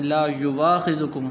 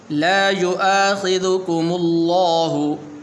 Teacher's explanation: بعض حضرات اس کو اس طرح پڑھتے ہیں لا یواخذکم، یوا نہیں پڑھنا، یہ واو کے اوپر حمزہ ہے، تو اس حمزے کو آپ نے پڑھنا ہے